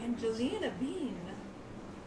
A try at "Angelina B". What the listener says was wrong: Angelina B. You added like an extra syllable in there.